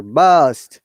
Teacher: British IPA, burst, no R sound. Burst. American R sound is there.